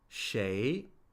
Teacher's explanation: rising tone, that's a second tone